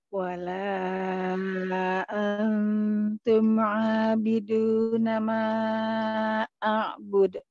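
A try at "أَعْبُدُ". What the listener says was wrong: Jelaskan kol-kolanya, jangan malu-malu. Bud. De.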